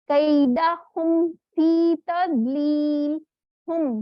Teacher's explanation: मीम के लिए हमें क्या करना पड़ता है, दोनों होंठ मिलके अलग होते हैं ना, तो इस वजह से उसको हमने पढ़ना है पहले, फिर उसके बाद नेक्स्ट वर्ड करना है, यानी सख्ती से थोड़ा अदा करना है।